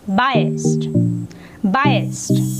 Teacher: While pronouncing the word, just make sure one thing, that it should end at T sound